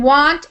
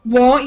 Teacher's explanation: Sometimes people might say it sounds like want, but it's won't. I won't with a long O sound.